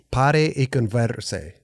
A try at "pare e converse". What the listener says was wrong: a little too much. The R.